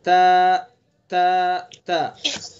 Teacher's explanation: تو زبان کی نوک ثنا علیا کی جڑ، یہ تا کا مخرج ہوا۔